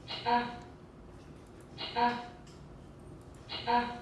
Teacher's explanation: it's a palate alveolar with some retraction and it's ejective